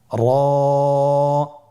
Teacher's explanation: স্ক্রিনে দেখুন, জিহ্বার আগার উল্টা পিঠ তার বরাবর উপরে তালুর সঙ্গে লাগিয়ে উচ্চারিত হয়।